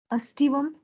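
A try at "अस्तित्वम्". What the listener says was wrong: You are not reading all the letters. Astitvam.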